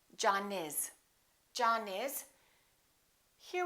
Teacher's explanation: we have an N followed by an eye therefore we don't say John is John is we link it and we say John is John is here